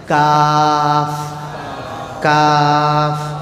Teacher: زبان کا جو جڑ ہے نا اندر کا، چھوٹی زبان کے نیچے کا حصہ اوپر کے تالو کے ساتھ لگانے سے، قاف، قاف۔ کاف، کاف کا مخرج زبان کی جڑ اوپر کے تالو کے ساتھ لگانے سے نکلتا ہے